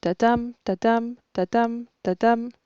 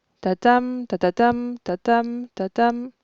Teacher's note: on alterne entre syllabes inaccentuées et syllabes accentuées. Et pour montrer à quel point c'est régulier, eh bien entre 2 syllabes accentuées, il s'écoule à peu près la même durée.